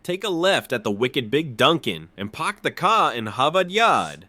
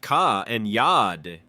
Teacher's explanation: Harvard linguists found that nearly half of Bostononians skip the R sound after vowels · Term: dropped R